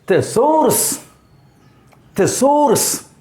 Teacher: Second syllable is emphasized. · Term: stressed syllable